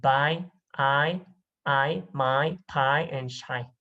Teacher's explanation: So here there is because this is a combination, so there is a movement from the first vowel into the second vowel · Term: diphthong